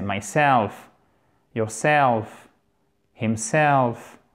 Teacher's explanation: Pour les pronoms réfléchis, il est toujours sur le self, l'accent tonique. Donc, ce n'est pas myself, mais c'est myself, yourself, himself.